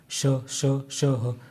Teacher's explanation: रगड़ के मुंह में रगड़ के इनको शब्दों को बोलना पड़ता है इसलिए इसमें ऊष्मा प्रकट होती है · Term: ऊष्म व्यंजन